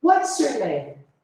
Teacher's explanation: Essas perguntas, elas são descendentes, ou seja, elas vão descendo a entonação. Começa mais alto e aí no finalzinho da frase desce.